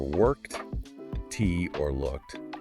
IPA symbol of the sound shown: t